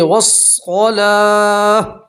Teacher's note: وقف کریں گے گولتا کے اوپر تو گولتا کو ہاں سے بدلیں گے اور ہاں کے اوپر جزم پڑھیں گے